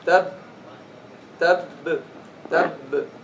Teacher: the first one is mudgham, is merged, and doesn't have a qalqala. Okay? And it's pronounced just by closing.